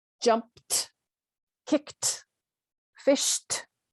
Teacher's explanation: when we add ed to a word ending in an unvoiced consonant, we pronounce the ed as a t sound.